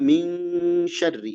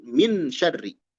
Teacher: ming dekat ke eng, ikhfa itu ya. Tapi bukan eng, dekat ke eng. Ya, dan ditahan. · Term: ikhfa hakiki